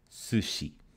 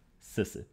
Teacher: they merge these two vowels into a more centralized vowel